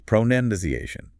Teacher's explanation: There's no noun sound in it at all.